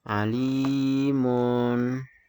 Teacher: Mad Thobi'i itu dibaca panjang sekitar 2 harokat